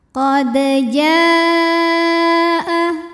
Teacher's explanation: Kemudian ada hukum qalqalah sughra karena ada huruf qalqalah yaitu dal yang sukunnya ini sukun asli dan ada di tengah bacaan. Maka dibacanya dipantulkan dengan pantulan yang kecil.